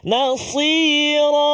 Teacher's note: Sad kena tebal. Terangkat lidah kita. Dekat dengan langit. Bukan sentuh. Dia dekat.